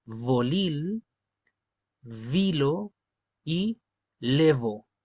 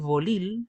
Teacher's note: El sonido que es con los dientes y los labios, ya no es la B castellana.